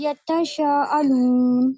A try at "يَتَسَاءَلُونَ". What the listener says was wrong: ہاں شین تھوڑی ہے.